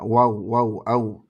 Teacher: apa namanya gambar ee ilustrasi makhorijul huruf Ini contohnya huruf wau tempat keluar huruf wau yaitu dari kedua bibir dengan cara mengumpulkannya